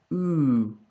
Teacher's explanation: And I like to imagine I'm sipping a little bit of water. And my tongue is fairly high towards the back. There'll be a small gap similar to e, but you want to try and shift it back just a touch.